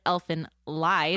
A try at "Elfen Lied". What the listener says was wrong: It's spelled like that, but it is German. It's actually with a T. Yeah. Elfen Lied.